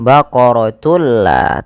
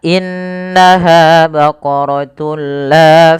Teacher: ketemu dengan lam kita baca dengan bacaan Idgham bila gunna yaitu dengan cara memasukkan tunnya kepada lam dan diganti bunyi suara nunnya menjadi suara lam